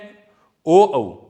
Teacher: जो ये 2 ध्वनियां हैं कंठ और ओष्ठ से मिलकर बोली जाती हैं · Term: कंठोष्ठ